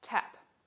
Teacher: puff of air after the t sound tap we say that the word tap begins with an aspirated stop specifically as an aspirated voiceless alveolar stop · But in this word, the voicing doesn't start until a little time after the vowel begins. Say the word, and you'll hear the puff of air after the T sound.